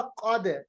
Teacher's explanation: क़ाफ को पढ़ते वक्त मोटी आवाज, जबान की जड़ ऊपर की तरफ मिल जाती है।